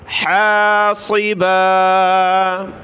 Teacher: صاد کو موٹا پڑھیں